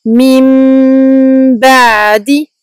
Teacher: Pour le ayn sakin, on donne une durée moyenne. · on prolonge la runna du mim longuement avant de passer au ba